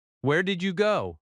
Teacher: Notice how your voice lifts slightly. That rising intonation signals a question in American English.